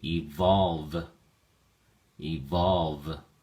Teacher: Evolve has two syllables and the emphasis or stress is on the second syllable.